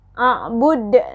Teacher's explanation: ini terakhir ada qalqalah, jadi harus agak dipantulkan.